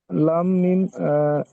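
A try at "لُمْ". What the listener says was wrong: জি না, মিমটা ধরা হবে না। মিমটা ধরা হবে না, পড়ার সময় লুম পড়বেন, বানান করার সময় লাম দুজের লুন।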